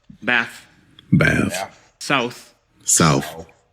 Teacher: voiceless th sound, th, is sometimes replaced by f.